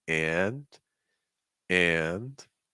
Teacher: make sure you get that fall rise that's going to be key for a natural sound there